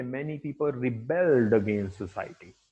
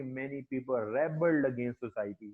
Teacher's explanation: verb के तौर पे यूज हो रहा है, तो stress would बी on the second syllable